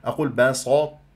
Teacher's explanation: افخم السين وافخم التاء والتاء اسويها طا واسوي هذه السين صاد